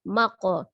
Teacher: ada huruf qaf sukun ya, dipantulkan qalqalah karena posisinya di tengah adalah qalqalah sugro saja ya, kecil